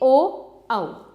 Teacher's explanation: कंठोष्ठ्य, गले तथा होठ से